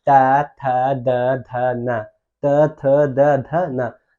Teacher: तो जो जीभ है तुम्हारा कहाँ सटता है, दांत में सटता है